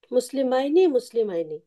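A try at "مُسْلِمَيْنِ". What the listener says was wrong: মাশাআল্লাহ, এই তো পারেন।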